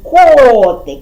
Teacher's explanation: наголос падає на перший склад на звук о